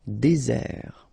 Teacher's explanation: Désert, okay, remember, final T not pronounced, désert, and really this z sound just because you get one S between the two vowels, okay, z, désert.